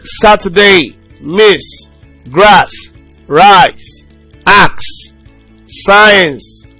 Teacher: Then we have it in, it's a voiceless alveolar fricative consonant sound. A voiceless fricative alveolar consonant sound.